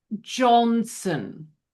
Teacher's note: it's like the that OH is the short O, like in hot. It still gets rounded a little bit.